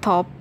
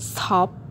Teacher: in the word top we pronounced with the puff of air which is called aspirated